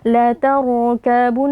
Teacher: nun tasydid wajib dibaca dengan gunnah